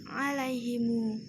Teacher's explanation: pada kalimat alaihim dibaca silah mim jama menjadi alaihimu, mu dibaca dua harokat